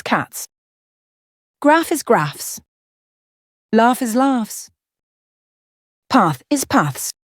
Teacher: the voiceless S, which sounds like a snake hissing, is used in words ending in F, K, P, P, H, T, and T.